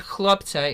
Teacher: when you see the kh it's like when you're going to buy a loaf of challah it's at the back of the throat but you have to add an l then because the word